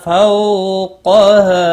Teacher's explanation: قاف مستعلیہ ہے، پر پڑا جائے گا